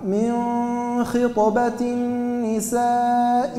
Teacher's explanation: فيه تفخيم لكن ليس كتفخيم الخاء لما تبدأ مفتوحة وإلا مضمومة